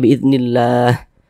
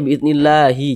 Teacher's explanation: Ini kita membaca Al-Quran, berhenti kita tepat di huruf H. Huruf H tidak dibaca panjang, makanya hurufnya kita sukun atau kita matikan, sehingga dibaca biiznillah, seperti itu.